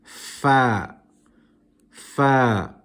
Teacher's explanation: you pronounce the letter far you can see that your top your top teeth the incisors touch the bottom lip